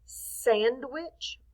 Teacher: we're actually stressing the accent mark on the first part the sand